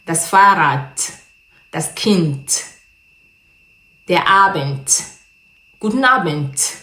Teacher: Le D est prononcé comme un T.